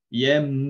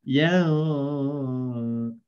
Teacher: So kalau kita nak rapatkan bibir, yambua. Kalau kita renggangkan, yambuah gitu.